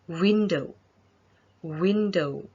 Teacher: push your lips forward and make it rounded and hard and make a sound like a very short you should feel vibration on your throat when you produce the sound